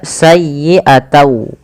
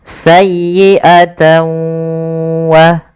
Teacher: Awalnya bunyi sayyi'atan dengan huruf nun yang diakhirkan, karena dia bertemu dengan waw, huruf n-nya itu diganti dengan waw. Maka sayyi'atau. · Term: idgham